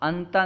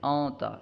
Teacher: اخفا کا معنی ہے چھپانا، یعنی نون ساکینہ تنوین کے بعد اگر حروف اخفا میں سے کوئی حرف آ جائے تو اخفا ہوگا، یعنی نون کو ظاہر نہیں کریں گے بلکہ نون کی آواز کو ناک میں لے جائیں گے. اونتا، اونتا، انتا نہیں پڑھیں گے، اونتا.